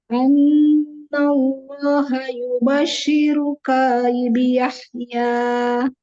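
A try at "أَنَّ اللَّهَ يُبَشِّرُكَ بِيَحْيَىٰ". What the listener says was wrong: Kafnya panjang sekarang. Ayo lagi. Gimana caranya biar nggak panjang? Ya, dipendekkan.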